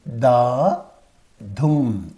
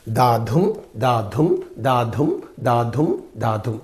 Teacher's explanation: Iambic means what? Da, dhum. One unstressed, next one is stressed. So, da, dhum, in the musical notes, if I can teach you this, you can easily understand.